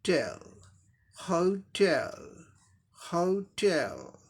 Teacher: तो ह पहला सिलेबल को साधारण तरीके से बोलेंगे, सेकंड को स्ट्रेस जोड़ देके बोलेंगे, टेल, होटेल, होटेल, ऐसे बोलेंगे।